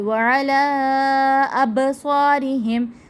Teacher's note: صاد پر پڑھیں گے، حروف مستعلیہ کا حرف